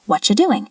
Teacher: The T and the Y sound together can create a ch sound.